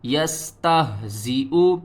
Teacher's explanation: ہا کو حل کے سب سے نیچے والے حصے سے ادا کرنا ہے اور ہا کی آواز جو ہے وہ بھاری آئے گی